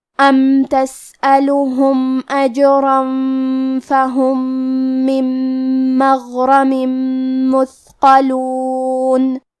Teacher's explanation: کلمت مغرمن میں غین کی ادائیگی حلق کے اوپر والے حصے سے ہے، غین حروف التفخیم میں سے ہے تو ہم یہ حرف کو موٹی آواز میں پڑھیں گے۔ · کلمت مثقلون میں حرف الثاء کو ہمیں ظاہر کرنا ہے کیونکہ اس پہ جزم ہے، اور حرف القاف کو موٹی آواز میں پڑھیں گے، قاف حروف التفخیم میں سے ہے